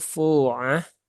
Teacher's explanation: funya dua harakat ya mad asli